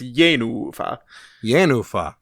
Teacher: an accented first syllable and a long unaccented second syllable